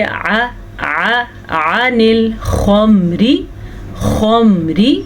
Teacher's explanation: عین کے مخرج کا دھیان رکھیے گا، واضح کر کے پڑھیے گا، کھینچ کے پڑھیں، جہاں حلق کے درمیان والے حصے سے یہ نکلتا ہے